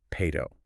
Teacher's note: natural speech drops the first vowel entirely, turning it into pato.